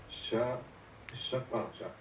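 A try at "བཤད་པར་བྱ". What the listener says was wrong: Chez, chez, chez. Chez, parce que à cause du ta, hein, le ta comme suffixe, hein, c'est un des 4 suffixes qui change le son a en e.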